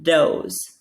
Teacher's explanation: my tongue is coming up and touching the roof of my mouth for a d sound